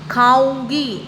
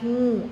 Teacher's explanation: नाक से भी आवाज़ आ रही है और मुंह से भी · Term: अनुनासिक